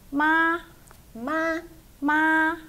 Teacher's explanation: the high flat tone